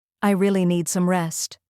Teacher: Each phrase has a beginning, a middle, and an end, like a gentle wave. Your voice should rise slightly in the middle, then fall softly at the end. · Start soft, rise on really, and fall gently on rest.